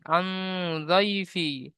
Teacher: নুন সাকিনের পরে হুরুফে ইকফা 15টির মধ্যে থেকে দদ এসেছে, তাই নুন সাকিন আওয়াজকে এক আলিফ পরিমাণ গুণনা করে পড়তে হবে